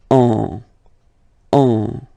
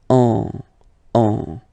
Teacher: you will get what we call a nasal, so it goes in your nose, and then you get the sound on. Okay, if you listen carefully, well, basically you don't listen, or you don't hear, sorry, any N in my pronunciation.